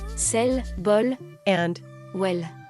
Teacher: you should have heard somebody saying sell ball and well with light L